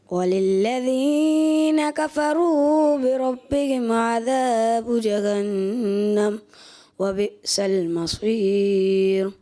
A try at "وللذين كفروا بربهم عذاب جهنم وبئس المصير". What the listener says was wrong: اچھا آپ نے ایک تو مد اصلی کو کھینچتے ہیں آپ اور پھر را کو پر بھی آخر میں. وبئس المصیر. مصیر نہیں کرنا. وبئس المصیر.